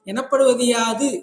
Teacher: எனப்படுவது என்பதில் உள்ள உகரம் குற்றியல் உகரம் இகரமாக திரிகிறது திரியும்போது தியாதினின் என்று அடுத்த யா என்னும் நெடிலோடு இந்த இகரமானது ஒட்டிக்கொள்ளும் அந்த